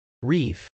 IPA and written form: rˈif (reef)